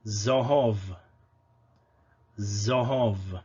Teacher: It is zayin, and it's just a z, a voiced sibilant.